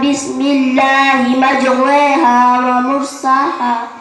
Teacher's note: Imalah itu adalah memirikan antara harokat fathah dan kasroh. Jadi bacanya condong miring dari harokat fathah ke harokat kasroh, atau seolah-olah dibaca Imalahnya terdapat satu kata dalam Al-Quran, yaitu kata majraha menjadi majreha dalam surat Hud ayat 41.